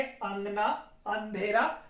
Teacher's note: आगे हम देखें तो अनुनासिक रूप इसका क्या होता है, तो यहां पर देखेंगे अंगना, अंधेरा, हल्का सा नाक से उच्चारित होने लगता है। ठीक है, कंठ के साथ साथ नाक से भी वायु प्रवाहित होती है